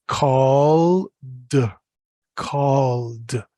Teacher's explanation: call is a voiced sound comes from down here in the voice box